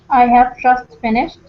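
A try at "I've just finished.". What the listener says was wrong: Not I have, but I've. I've. I keep hearing you say I have, but here, don't pronounce the have, just one syllable. I've.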